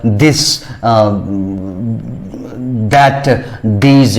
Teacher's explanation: लेकिन द के उच्चारण में हम वोकल कोड जो कि कंठ के पास होता है वहीं वहीं से वहां थोड़ा वाइब्रेट करते हैं ध्वनि को और बजिंग साउंड की तरह